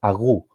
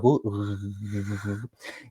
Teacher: cuando le dicen a los bebés diga gu, y eso es porque comienza en la cavidad de la boca, en la parte posterior, el velo del paladar hace un cierre con la base posterior de la lengua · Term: gorjeo